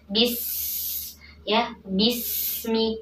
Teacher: Sin alir nafasnya alir suaranya kemudian hadirkan desis tajamnya bis ya bismillah tidak boleh disemi tidak memantul ya tapi alirkan